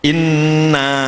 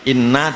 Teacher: dipotong berarti pendek, diulangi lagi inna dengan panjang